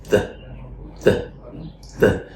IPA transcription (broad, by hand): ð